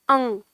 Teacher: इसका जो साउंड है इसकी जो ध्वनि है वो ये है जब हम बोलते हैं अंग तो नाक में जो हमारे जाता है ध्वनि तो वो ध्वनि इसका सही उच्चारण है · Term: अनुस्वार